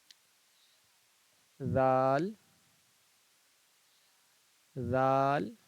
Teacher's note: جو زبان کی جو نوک ہے آپ اس کو، جو اوپر کا جو سامنے والا جو دانت ہے نا اس کے بالکل نیچے والے جو سرا ہے اس سے زبان کی نوک کو سٹائیں ہلکا سا